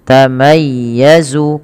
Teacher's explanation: Nah, ketika melafalkan ya yang berharokat tasydid, ini bukan hanya takadu tamayya ya, tamayya dipanjangkan, tapi dia ditekan dengan lembut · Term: bacaan lin